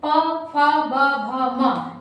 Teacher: प फ ब भ म, यानी जब हम प वर्ग को बोलते हैं तो हमारा जो दोनों होंठ है, यानी ऊपर नीचे का जो दोनों होंठ है वो आपस में टच करता